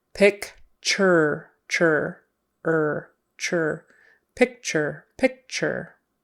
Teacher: typically that t in the middle is going to sound like a CH and Ur is going to sound like e r picture picture